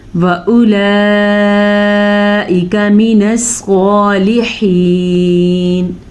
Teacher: اور حمزہ نیچے زیر ہے، کاف پہ زبر، تو ان کو ہم چھوٹی مقدار سے پڑھیں گے، لمبا نہیں کریں گے